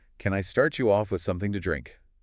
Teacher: Note that rising intonation, it's a yes-no question, offering a choice politely.